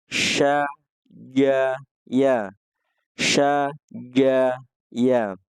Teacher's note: berada di tengah lidah, di langit-langit, tapi lidah tidak menempel.